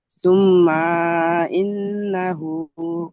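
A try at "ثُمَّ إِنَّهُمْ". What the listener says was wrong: সুম্মা, টান হয়ে গেল যে। ইন্না, দুটো সব অজীব গুণনা। তাসদিদ আর নুন তাসদিদ, কিন্তু টান হবে না। দুটো সব হারাকাতে রয়েছে। সুম্মা ইন্না।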